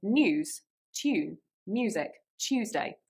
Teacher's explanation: in some of those words you actually have a little Y sound